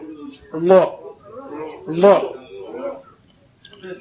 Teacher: और ला ऐसे बोला जाता है, जीभ मोड़ करके। मुंह में जीभ को मोड़ दो